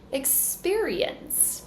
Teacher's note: Now second syllable is stressed